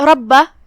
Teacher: کلمت ربہ، را پہ زبر ہے تو را کا حکم ہے تفخیم، مطلب ہم را کو بھاری آواز میں پڑھیں گے۔ پھر با پہ تشدید ہے، 2 حرف کے برابر ہمیں با کو پڑھنا ہے